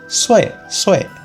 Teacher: It's like saying the word Sue, but since this is a fourth tone, the sound is pretty similar to if you angrily shout at someone.